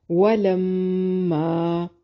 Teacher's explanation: میم مشدد پہ غنہ ضروری ہے. ما الف مدہ ہے.